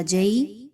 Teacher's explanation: یا لین ہے، 1 سے 2 الف کے برابر لمبا کر کے پڑھیں گے۔